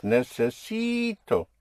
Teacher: You have a vowel at the end, so you push down on the syllable before last, on the penultimate syllable, which makes it necesi.